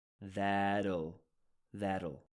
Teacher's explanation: this is the syllabic l or an l that has a syllable like little